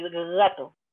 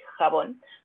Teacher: O la sonoridad, si van a vibrar nuestras cuerdas vocales o no. Con la de gatito, la G, nos vibra. La J no vibra.